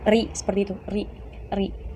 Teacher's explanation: kalau membaca huruf ro itu lidahnya itu lurus, cuma ada getaran sedikit aja · Di mana ro tarqiq ini sifatnya itu tipis. Nah, ro tarqiq bisa dibaca tipis itu dengan ciri-ciri ro-nya itu berharokat kasroh, ri, seperti itu, ri.